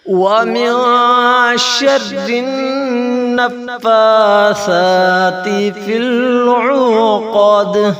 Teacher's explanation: دال پر قلقلہ کیا جائے گا، جھٹکا دے کر پڑھ جائے گا